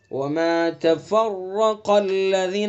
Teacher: وما تفرق الذین، اور قاف، قاف کو پر پڑھیں گے اور قاف کا جو مخرج ہے زبان کی جڑ اور اس کے مقابل اوپر کا تالو وہاں سے ادا کریں گے